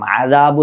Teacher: അനിന്റെ മഹറജ് തൊണ്ടയുടെ നടുഭാഗത്തു നിന്നാണ് ഈ അന് പുറപ്പെടേണ്ടത് ഔ എന്ന് വളരെ ഒഴുക്കോടുകൂടി ആകണം ഇത് ഉച്ചരിക്കേണ്ടത് അല്ലാതെ